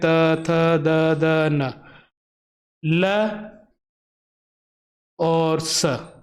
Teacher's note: इन वर्णों का जो उच्चारण स्थान होता है क्या होता है, दंत होते हैं